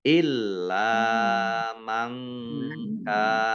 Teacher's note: Illa lam fathah alif mat tabi'i ya dibaca panjang 2 harokat. Mangkana nun sukun bertemu dengan huruf kaf bacaan ikhfa ya dibaca samar-samar